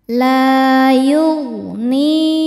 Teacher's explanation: La yugni ni hukumnya mad thobi zohiri karena ada ya sukun sebelumnya kasrah. Cara bacanya panjang dua harakat.